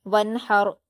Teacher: دیں گے کیونکہ را پر جزم ہے، ونحر، اور یہاں پر را ساکن سے پہلے زبر ہے اس لیے را ساکن کو پر پڑھا جائے گا